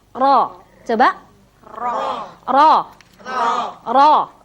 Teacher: getarannya taqrir nya itu tidak terlalu banyak